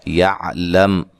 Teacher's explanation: یہاں میم ساکن کا اظہار ہے، غنہ نہیں کریں گے۔